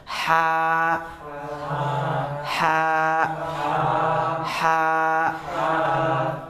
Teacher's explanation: Ini di tenggorokan bagian tengah. Ya, dia memiliki sifat yang khas yaitu hams. Sifat desis.